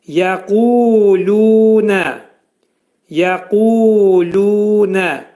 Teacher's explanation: Yə incə samitdir. Qaf qalın hərfdir. Bu hərfin məxrəci demək dilin sonu və dilçəyin başlanğıcındadır.